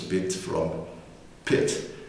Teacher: Both b and p are labial, but one of them is voiced